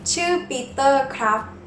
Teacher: for guys, it's always nakrap or krap always high tone.